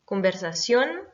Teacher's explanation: conversation est un mot qui est accentué sur la dernière syllabe